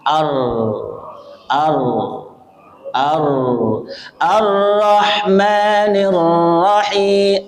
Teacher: sifat yang khusus daripada huruf ro itu sifatnya adalah takrir bergetar atau mengulang